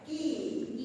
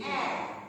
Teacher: when you say E, it's a closed vowel because the tongue is nearer to the roof of the mouth. But when we say A, it's relatively open and it's not so near to the roof of the mouth.